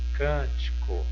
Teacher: o can é a sílaba tônica dessa palavra